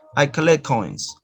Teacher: Notice here that you omit the sound ta and you just produce one ka sound, gemination. So elision and gemination together.